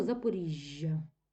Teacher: між двома голосними відбувається подовження приголосного яке на письмі передається двома літерами